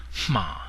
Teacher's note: a preposition at or in or by in burmes is ma there is a nasal sound in there it's not ma like in Margaret in English it's HMA so make sure you get that nasal sound HMA is a